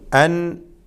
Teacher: സാക്കിനായ നൂനിനെ ഇൽഹാർ ചെയ്യേണ്ട ഒരു രംഗമാണിത്.